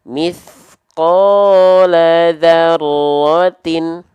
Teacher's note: huruf ta-nya tidak dibaca ti, tapi dibaca tin. Maka ketika kita lafalkan mithqala dzarratin. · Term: kasroh tain